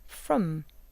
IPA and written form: fr.m (from)